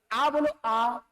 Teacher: अब आ बोल रहे हो तो जीभ का पिछला हिस्सा प्रयोग में आ रहा है